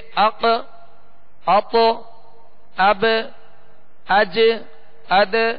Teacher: لیکن 5 حروف ایسے ہیں اور وہ 29 حروف میں سے یہ 5 حروف ایسے ہیں جنہیں حروف قلقلہ کہتے ہیں، اور قلقلہ کا معنی ہے جنبش یا حرکت کے، یعنی جب ان 5 حروف میں قلقلہ ہوگا تو آواز لوٹتی ہوئی آئے گی، آواز ان کے مخرج میں لوٹتی ہوئی آئے گی اور آواز میں جنبش ہوگی